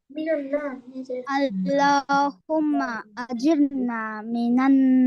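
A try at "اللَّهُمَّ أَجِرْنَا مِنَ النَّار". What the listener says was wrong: হ্যাঁ মাশাআল্লাহ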